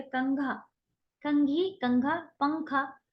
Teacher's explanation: نون ہے لیکن ہم اسے صاف ظاہر کر کے نہیں پڑھ رہے ہیں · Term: اخفا